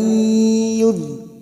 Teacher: Wa may nun sukun bertemu ya idgham bi gunnah, masuk dan mendengung, siap masuk pada huruf berikutnya yaitu huruf ya dan mendengung selama 2 atau 3 harokat